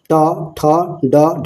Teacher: हिंदी की मूर्धन्य ध्वनियाँ जो है ट ठ ड ढ है